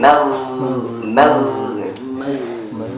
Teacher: Padahal ghain itu huruf rokhawah, suaranya berjalan, enggak berhenti.